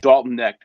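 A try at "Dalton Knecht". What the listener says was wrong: Connect. You pronounce the K, Connect.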